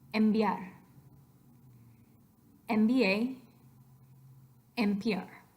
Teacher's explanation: when you have an N phoneme happen before a bilabial consonant what you're really doing to that end is pronouncing it as a bilabial